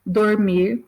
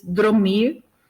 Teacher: Então, quando a gente ouve alguém, em vez de dizer dormir, diz dromir, né? Então, ali esse R, né, que vem depois do O, passa para a posição anterior, então continua na mesma sílaba, a gente tem uma metátese, né?